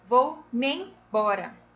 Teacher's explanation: esse mien, quando você pronuncia, você não pronuncia separado, você fala junto. · Bora, neste caso, o bó é uma sílaba tônica